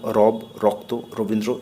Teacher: জিহ্বার অগ্রভাগকে কম্পিত করে এই বর্ণটি উচ্চারিত হয় বলে একে কম্পনজাত বর্ণ বলে, যেমন রব, রক্ত, রবীন্দ্র ইত্যাদি।